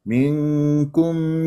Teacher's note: لا تقطع صوت الميم ابدا انا عندي ميم مظهره